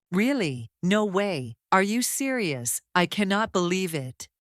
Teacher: In these examples, the pitch rises strongly on the first part, then falls quickly at the end. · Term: Rise fall intonation, Rise-fall intonation